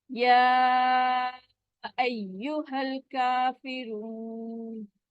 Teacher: ٹھیک ہے, یا مد کو ہم نے 4 کاؤنٹ اسٹریچ کیا. پھر کاف باریک والا ہے, اس کے اوپر کھڑی زبر ہے, اس کو 2 کاؤنٹ اسٹریچ کریں گے